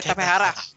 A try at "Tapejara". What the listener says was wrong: Tapejara. I think you need to roll that R too.